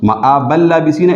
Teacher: نون تنوین نہیں پڑھا جاتا کیونکہ وہ لام سے بدل گیا اور لام کا لام میں ادغام ہوا ہے، لیکن غنہ نہیں ہوتا یہاں پر، تو اس کو ادغام بلا غنہ کہتے ہیں.